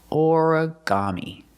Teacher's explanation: Put the stress on the first syllable and the third syllable.